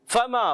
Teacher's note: فا کا مخرج ہے خاص، کیا ہے؟ اوپر کے دانتوں کنارے، نیچے کے ہونٹ کا تر حصہ.